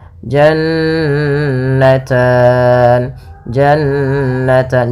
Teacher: Jan ada Nun berharakat tasdid maka ini kita namakan dengan gunah bacaan gunah yaitu suara nunnya ditahan dua harakat